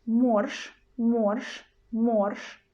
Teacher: we've got je in the end but we pronounce it as a sh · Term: voiceless sound sh